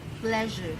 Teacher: The tip and blade of the tongue is elevated into contact with the sides of the palate and teeth, leaving a flattened midline groove along the upper surface of the tongue.